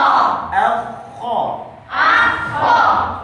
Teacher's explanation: maksudnya ada tempat kho-nya dari tenggorokan paling atas